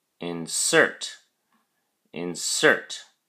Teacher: insert has two syllables in cert and the emphasis or stress is on the second syllable cert